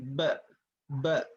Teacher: Kalau huruf ba, dia menempelkan dua bibir disertai dengan tekanan, kemudian tanpa gunnah. Kalau huruf ba ini pengucapannya ditutup dua bibir, dirapatkan, kemudian disertai tekanan ba. ba, nggak boleh, tidak boleh lemah.